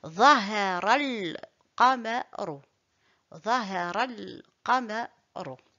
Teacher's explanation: Pour lire correctement, on ne prononce pas le alif et je relis le ra avec le lam. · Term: liaison